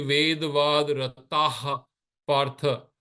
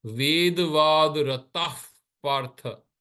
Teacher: You want to bring the visarga sound close to the pa. So the visarga will come from here. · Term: upadmaniya